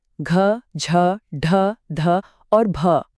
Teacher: हमारे पास ज्यादा सांस भी है और वाइब्रेशन भी। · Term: महाप्राण सघोष